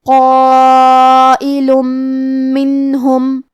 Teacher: کلمت منہم میم حروف الادغام بغنہ میں سے ہے اور ادغام کا معنی ہے حرف کو حرف میں داخل کرنا. تو ہم یہ تنوین کو میم میں ملا کے غنہ اور تشدید کے ساتھ یہ حکم کو ادا کریں گے